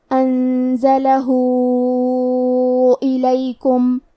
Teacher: یہ مد صلہ کبریٰ ہے تو ہم اپنی آواز 4 مد کے برابر لمبی کریں گے